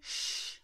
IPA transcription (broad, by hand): ʃ